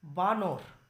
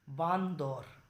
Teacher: মাঝখানেই দেখো একটি দ ব্যঞ্জন ধ্বনির আগমন ঘটছে, যেটা নয়ের সঙ্গে সংযুক্ত হয়ে বসছে। সংযুক্ত হয়ে বসুক, আলাদা করে বসুক, দেখো শেষে নয়, শুরুতে নয়, মাঝখানে কিন্তু ব্যঞ্জন ধ্বনির আগমন ঘটছে। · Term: দ শ্রুতি